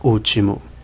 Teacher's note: a vogal tônica o acento tônico está sobre a sílaba u último se fosse sobre a sílaba I seria pronunciado útimo se fosse